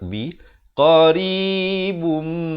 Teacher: Di sini idgham bi gunnah. Asalnya qaribun, tapi datang mim jadi bum, begitu didengungkan dua harakat